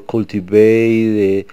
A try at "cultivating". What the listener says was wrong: You want to say cultivating. Don't forget to pronounce all of that word. So with these multisyllabic words, Jose, sometimes you don't completely pronounce all the syllables in those words.